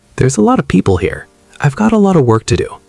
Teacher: the of just melts into the word before it